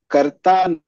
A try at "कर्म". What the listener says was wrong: कर्म, उसे कर्म ऐसे तोड़ के नहीं पढ़ो ना आप लोग, हलन थोड़ी ना, उसमें पूरा है कर्म। ने बट समझाने के लिए कई बार कर्म बोल देते हैं, बाकी it's कर्म।